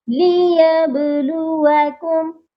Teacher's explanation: لیبلوکم، اکثر لوگ اس کو لیبلوکم پڑھتے ہیں، لام کے اوپر زبر لگاتے ہیں، لام کے نیچے زیر ہے، اس غلطی پر آپ نے فوکس کرنا ہے۔ لیبلوکم، اور با پر قلقلہ کرنا ہے کیونکہ با حروف قلقلہ ہے